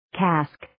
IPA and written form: kæsk (Cask)